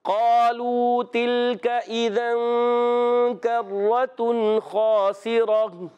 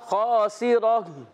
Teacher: سین کو باریک رکھنا ہے، را پر زبر پر ہو جائے گا. گول تا کو وقف میں ہا سے بدل دیں گے. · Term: وقف بالابدال